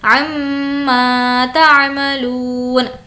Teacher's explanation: میم پر تشدید ہے، غنہ کریں گے